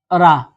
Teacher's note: लुंठित हो गया आपका रा ठीक है इसको बोलने पे जीभ पलट जाती है और इसको दूसरी भाषा में कहते हैं प्रकंपित प्रकंपित भी बोलते हैं इसको।